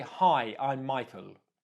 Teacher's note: Michael is more certain, it's a statement, you know who you are, you know your name, use a downwards inflection.